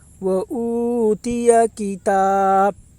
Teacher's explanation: کھڑا زبر برابر ہوتا ہے الف مدہ کے، اس لیے کھڑا زبر کو ایک الف کے برابر کھینچ کر پڑھیں